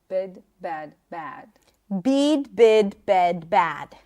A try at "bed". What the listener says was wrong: Now your bed is closer to the ah. too open. Bring it back to closer to an Israeli Bed, bad.